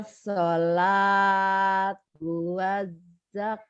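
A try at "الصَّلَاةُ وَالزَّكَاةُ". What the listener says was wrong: Wazakka. Ada tasdid. Datar. Tuh, tuh ketinggalan. As-sholatu. As-sholatu waz-zakah. As-sholatu waz-zakah.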